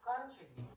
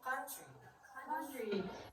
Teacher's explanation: the first syllable, the stress syllable is con, and then unstressed is tree